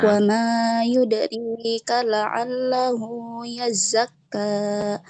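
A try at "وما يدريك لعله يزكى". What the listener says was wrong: pengucapan huruf dal di sini jangan diputus. Memang qalqalah ya, memang dipantulkan tapi jangan diputus. Jangan wa ma yudrika, tapi wa ma yudrika.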